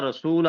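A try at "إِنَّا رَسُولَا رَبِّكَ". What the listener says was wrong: رسولا رسولا لام کو بھی لمبا کریں گے.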